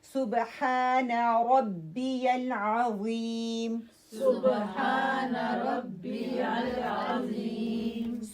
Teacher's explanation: صبح باقلقلہ ہا جو ہے ایری ہا ہے، 2 کاؤنٹ اس کو لمبا کریں گے، ہا middle part of your throat, را موٹی پڑی جائے گی، العظیم عین again middle part of your throat, and را tip of my tongue and heavy ہوگی · ہا جو ہے ایری ہا ہے، 2 کاؤنٹ اس کو لمبا کریں گے، ہا middle part of your throat, را موٹی پڑی جائے گی، العظیم عین again middle part of your throat, and را tip of my tongue and heavy ہوگی، ٹھیک ہے؟